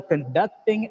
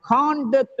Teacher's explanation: it works as a verb the second syllable is stressed when it works as a noun or adjective the first syllable is stressed